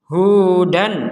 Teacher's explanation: tanwin atau fathain ini disambung atau bertemu dengan huruf hamzah dibaca dengan jelas